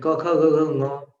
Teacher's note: जैसे क ख ग घ, यहां तक तो आपने सीधे सीधे कंठ से बोला, लेकिन ङ बोलने के लिए आपको कंठ और नासिका दोनों का मेल करना होता है